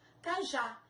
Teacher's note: São duas sílabas. A última sílaba mais forte, já, oxítona terminada em A.